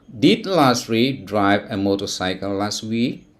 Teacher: pay attention to the intonation it is rising intonation at the end of the sentence